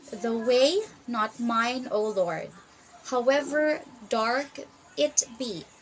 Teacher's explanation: it's three pairs of first unstressed and second stress syllable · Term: iambic triometer, iambic trimeter